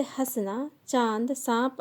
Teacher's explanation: अनुनासिक, इसका उच्चारण करते समय वायु मुख और नाक दोनों से निकलती है। इसे चंद्र बिंदु के रूप में लिखा जाता है, जैसे हंसना, चांद, सांप आदि।